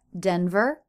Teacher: my voice went up denver because i was making a pause but not done with my thought but normally that word will be said denver stress is on